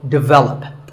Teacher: the first syllable is actually de, and the stress is on the second syllable. So, develop.